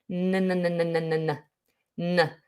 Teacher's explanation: N is normally pronounced with the tip of the tongue on the alveolar ridge, which is just behind your top teeth